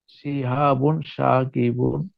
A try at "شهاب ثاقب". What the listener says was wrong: This is tha. Thaqib.